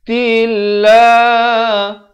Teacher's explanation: Lafz jalalah di sini dibaca nipis. Datang sebelumnya baris kasrah